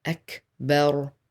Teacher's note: كاف has سكون, so it has hems. Let out some air. أكبر. Bel, and the ra is strong.